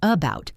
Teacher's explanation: The first a is a schwa.